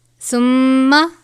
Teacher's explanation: ثم، میم مشدد ہے، غنہ ہوگا